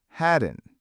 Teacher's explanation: Had not loses the t in not and becomes haden.